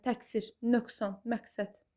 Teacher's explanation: Q olaraq da qalır. Sözün ortasında gələn q hərfi özündən sonra kar samit gələrsə k kimi tələffüz olunur.